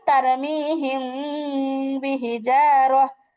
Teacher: তো মিম সাকিন ও মিম সাকিনের পরে যদি বা হরফ আসে, তাহলে উক্ত মিম সাকিনকে নাকের ভিতরে লুকায়া গুন্না করে পড়লে সেটা হয়ে যায় ইকফা